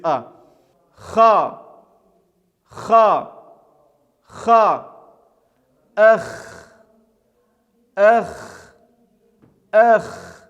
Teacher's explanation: при ее произношение участвует язычок и произносится она с определенным хрипом это буква является щелевой глухой производства без участия голоса является твердой · Эта буква является щелевой, глухой, произносится без участия голоса и является твердой, читается через А. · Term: язычковой